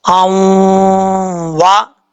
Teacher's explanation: اور یہاں پر ادغام ہوگا دو زبر کی تنوین کا واو کے ساتھ